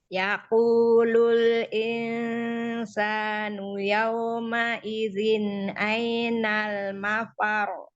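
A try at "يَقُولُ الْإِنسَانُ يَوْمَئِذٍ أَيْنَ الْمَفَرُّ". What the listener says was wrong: Mafaru karena roknya bertasydid dinaber. Mafaru. Iya, naikkan sedikit ya karena tasydid. Mafaru. Ai harfulinnya diluruskan i-nya. Ainal mafaru. Iya, di number ya, rot tasydidnya. Jadi itu ya, harfulinnya luruskan, ai. Nah, lalu ro yang bertasydid, itu tasydid ketika waqaf ya. Itu dinaber. Ro yang bertasydid ketika waqaf itu dinaber ya.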